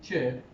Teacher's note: The first part is stop, which is te, and the second part is ish, which is fricative. So we can say that neither the stop is complete nor the fricative is complete.